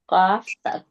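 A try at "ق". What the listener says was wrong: काफ क्यों कहते हैं आप लोग। कभी भी ये बारीक नहीं होता, कभी भी ये दूसरा काफ नहीं बनता है। कभी भी ना कहें काफ तालाम,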